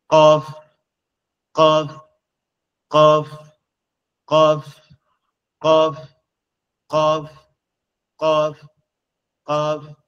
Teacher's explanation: কফ হচ্ছে আমাদের জিহ্বার গোড়া থেকে একটু আগে সামনের দিকে একটু আগে বাড়ায়া উপরের তালুর সঙ্গে লাগবে, লেগে উচ্চারণ হবে কফ কফ কফ কফ কফ কফ কফ কফ কুল কুল কুল কফ কফ কফ কফ কফ কফ।